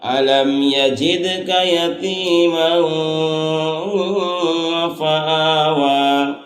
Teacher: أَلَمْ يَجِدْكَ يَتِيمًا فَآوَىٰ، أَلَمْ يَجِدْكَ يَتِيمًا فَآوَىٰ، تو یتیماً فآویٰ یہاں پر معلوم ہے کہ دو زبر تنوین کے بعد حروف اقفا میں سے فا ہے، اس لیے یہاں اقفا کریں گے، یعنی دو زبر تنوین کی آواز کو ناک میں چھپا کر پڑھیں گے۔